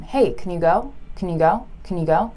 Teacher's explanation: we rarely say can drawn out like that we usually say cn